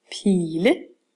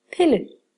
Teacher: I bliver altså til en lang vokal Pile og herovre står der pille her er i en kort vokal